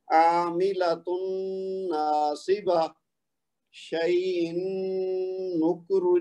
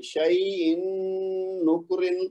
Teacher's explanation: تنوین کو ظاہر نہیں کرنا، اس کو تھوڑا لمبا کر کے غنہ کرنا ہے اور پھر اگلی نون کی آواز نکالنی ہے